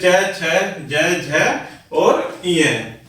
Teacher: next होता है प्यारे बच्चों तालव्य, जिसमें तालु से बोले जाने के कारण इन्हें तालव्य वर्ण कहते हैं